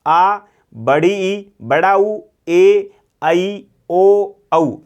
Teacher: हमारे 2 मात्राओं का समय लगता है, इसी कारण हम इसे क्या कहते हैं, द्विमात्रिक स्वर कहते हैं। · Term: दीर्घ स्वर